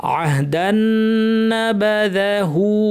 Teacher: দান দালের তানউইন গিয়ে এই নুনকে ধরবে, লম্বা গুন্না তাসদিদ আছে। আহদান নাবাদাহু, হায়ের উপর উল্টা পেশ টানতে হবে।